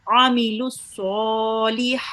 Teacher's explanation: making sure that we pronounce this ayn from the middle of your throat